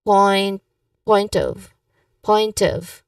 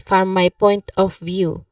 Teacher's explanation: So we link the word smoothly, especially the words point of. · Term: smooth linking